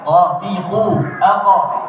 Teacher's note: Pangkal lidah dimundurkan lagi ke belakang, tepatnya di langit-langit lunak, maka keluar huruf qaf. Anak lidah kita yang di belakang itu nanti akan diangkat oleh pangkal lidah kita otomatis.